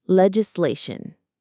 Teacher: The stress is on the lay syllable. Le, gis, Legislation.